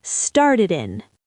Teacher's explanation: the D at the end of started links to the following vowel, and the D in and is dropped and sounds like un